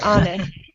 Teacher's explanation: in honest we're stressing the first syllable